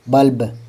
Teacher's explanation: ल पर जोर नहीं पड़ेगा। ब पर ही पड़ेगा।